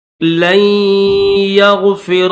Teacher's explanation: لام کو یا کے ساتھ ملائیں گے، یہ جو نون ہے اس نون کے اوپر غنہ کر کے لام کو ڈائریکٹ یا کے ساتھ ملا دیں گے